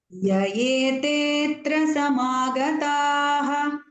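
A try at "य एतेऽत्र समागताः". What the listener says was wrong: You are missing that te, dirgha swara.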